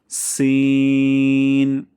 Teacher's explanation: জিহ্বার আগা এবং সামনের নিচে ২ দাঁতের আগা থেকে পাতলা সাউন্ডে উচ্চারণ করব।